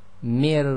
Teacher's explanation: So the so the ra which is sackin must join to a sound before and the only sound we've got before is the meme with the kasra because the noon in the min is actually sakin as well. So you join the mi sound directly to the raw which is sakin. So essentially we have the sound of mir mi and we've got the double up sound.